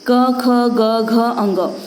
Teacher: हम इनको गले से एक ही स्थान से हम लोग 5 वर्ण का उच्चारण करते हैं। इसका उच्चारण कंठ से हुआ, इसलिए यह कंठय कहलाते हैं।